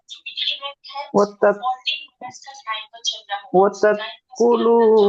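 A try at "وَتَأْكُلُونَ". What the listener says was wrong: ওয়াত্তাত নয়, হামজার উপর সাকিন এসছে, সাকিন যুক্ত হামজা একটু ঝাটকা দিয়ে পড়তে হয়। ওয়াত্তা কুলুনা।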